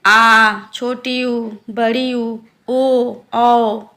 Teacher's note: जिन स्वरों के उच्चारण में जीभ का पिछला भाग सक्रिय रहता है उन्हें पश्च स्वर कहते हैं, जैसे आ, छोटी ऊ, बड़ी ऊ, ओ, औ।